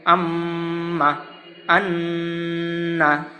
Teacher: নাকের বাঁশি হইতে গুন্নাহ উচ্চারিত হয়